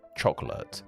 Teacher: you'll probably be told a word like chocolate has 3 syllables. But in most cases, you will just say 2. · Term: elision